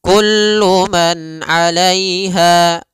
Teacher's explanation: Pada lafal kullu man di sini ada izhar halqi, yaitu suara nunnya dibaca dengan jelas ketika bertemu dengan huruf ain